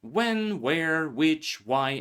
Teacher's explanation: also h is silent after w when where which why and so on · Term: Silent H